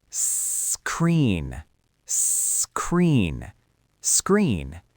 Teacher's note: Notice how I don't add an E at the beginning. · I just start with the pure air of the S sound.